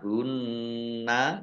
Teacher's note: Nun tasdid ghunah dibaca mendengung ditahan dua harakat